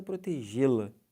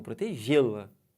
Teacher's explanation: Esse lá vem bem fraco. Ele é átono, não leva acento.